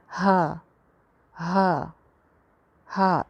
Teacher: ایک الف لمبا کر کے پڑھنا ہے، ہا جیسے اردو میں بولتے ہیں ہا · حلق ہی سے نکلتا ہے لیکن حلق کے سب سے نیچے والے حصے سے نکلتا ہے جو کہ سینے سے قریب ہے۔ تو اس میں نا آواز اگر ہم اوپر والے حلق کی طرف لے کے آنے کی کوشش کریں یا اس کو کانشیسلی نکالیں تو پھر یہ اس میں گڑبڑ کا امکان ہے، ورنہ نارملی یہ لوگوں کی ٹھیک ہی ہوتی ہے۔